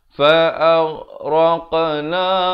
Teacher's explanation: Fa'aghraqna, ghain jangan berikan pantulan, jangan baca fa'ag, tak betul. Fa'aghraq, yang raq ini baru diberikan lantunan kerana di sini qaf merupakan huruf qalqalah, ghain bukan huruf qalqalah.